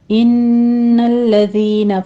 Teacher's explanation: الذین میں دال کو نرمی سے پڑھتے ہوئے یا مدہ ادا کریں گے · ان میں غنہ واجبہ ہے، 2 کاؤنٹ کریں گے